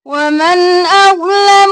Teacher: نون پر اظہار کیونکہ آگے حمزہ آ گیا